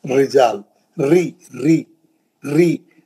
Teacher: जब भी जेर से आएगा रा कुरान में, आपका एकदम टोन डाउन कर लेना, टोन डाउन कर लेना, क्योंकि जेर है।